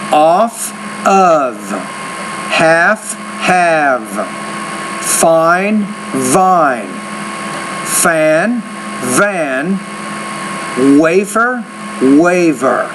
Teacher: you need to pronounce the V with more vibration